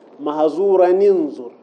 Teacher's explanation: التقى الساكنان التنوين والنون الأولى من أنظر فيحرك التنوين للتخلص من التقاء الساكنين